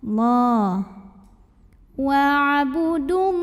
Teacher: Lam pada lafaz Allah dibunyikan secara tafkhim karena huruf sebelumnya berbaris dhammah. Maka cara membacanya tebal.